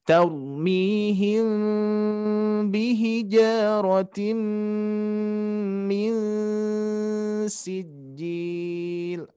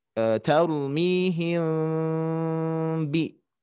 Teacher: Tarmihim bi ya, diikhfakan karena ikhfa syafawi menyembunyikan mim sukun bertemu dengan huruf ba